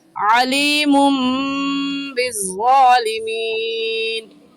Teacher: तनवीन के बाद बा आ गया तो इक़लाब होगा, यानी एक मीम ले आएंगे छोटी सी और इस तनवीन को मीम के साथ मिलाकर पढ़ेंगे। तो यहाँ पर भी अलीमुन कहना गलत है और सही है इस तनवीन के साथ मिलाकर अलीमुम बिज़्ज़ालिमीन।